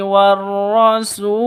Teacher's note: War rasul alif lam syamsiyah ada tanda tasydidnya setelah alif lam. Terus rasul mad arid lisukun, panjang boleh 2, boleh 4, boleh 6 ketukan.